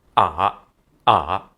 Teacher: You just need to bounce back a little. I mean, if you make it a full return, in my ears, it feels like a descending tone plus an ascending tone. So it's like 2 syllables, like ah.